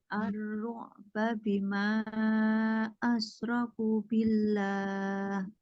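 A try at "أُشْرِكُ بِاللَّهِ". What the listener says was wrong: Ku-nya panjang. Ku asyraku.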